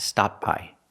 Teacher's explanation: when people link the word sometimes you don't really hear the T but it's there